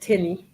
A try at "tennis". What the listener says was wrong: so you need to pronounce the S tenis